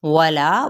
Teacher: واو ہونٹوں کی نا تمام گولائی کے ساتھ